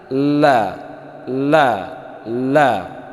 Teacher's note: La itu punggung ujung lidah menyentuh gusi depan yang atas, tapi pinggirnya juga agak kena. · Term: lam